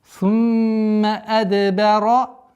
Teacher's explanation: Здесь у нас правило калкаля, взрывность, так как звук даль относится к одному из 5 букв калкаля.